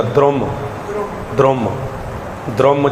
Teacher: ਜਿਹੜਾ ਦੱਦੇ ਦੇ ਪੈਰ ਦੇ ਵਿੱਚ ਔਂਕੜ ਲੱਗਾ ਹੈ ਉਹ ਰਾਰੇ ਨੂੰ ਜਾ ਕੇ ਬੋਲੇਗਾ। ਇਹਨੂੰ ਕਿਹਾ ਜਾਂਦਾ ਹੈ ਸਵਰ, ਭਾਵ ਕਿ ਜਿਹੜਾ ਸਾਡੇ ਸਾਹਮਣੇ ਔਂਕੜ ਲੱਗਾ ਤਾਂ ਦੱਦੇ ਨੂੰ ਹੈ, ਪਰ ਜਿਹੜਾ ਇਹਦਾ ਉਚਾਰਨ ਹੋਵੇਗਾ ਉਹ ਰਾਰੇ ਨੂੰ ਹੋਵੇਗਾ।